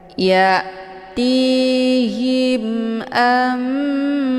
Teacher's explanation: izhar syafawi jelas tiada berdengung